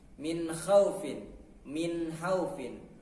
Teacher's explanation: huruf nun ujung lidah ke bawah sedikit dari makhraj lam